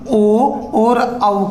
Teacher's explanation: ओ और औ का उच्चारण स्थान कंठोष्टम होता है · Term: कंठोष्ट वर्ण